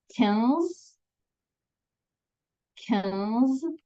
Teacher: with a very French sound, that lovely nasal sound is unmistakably French